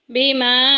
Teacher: اس کو 3 الف کے برابر لمبا کریں گے، یہ مد منفصل ہے